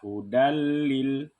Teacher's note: idgham bila gunnah, masuk dengan tidak dengung. Jadi dibaca hudalil.